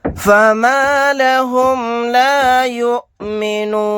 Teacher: یہاں پر حمزہ ساکنہ پر جھٹکا لگا کر پڑھیں گے. آیت کرنے کی صورت میں نون کو ساکن بنا کر پڑھیں گے.